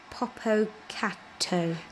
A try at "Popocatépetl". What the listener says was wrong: Te, not to. Te. Te. Te. Popocatépetl.